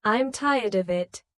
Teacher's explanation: I'm tired of it with of sounding almost like are. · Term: weak forms